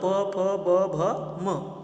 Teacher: आपले जे ओठ आहेत ते एकमेकांना काय होतात चिकटतात लागतात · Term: प वर्ग